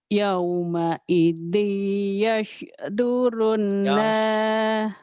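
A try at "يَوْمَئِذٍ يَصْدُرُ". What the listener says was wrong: Sodnya jangan ada anginnya. Yash. Jangan yosh. Jangan yosh. Yash.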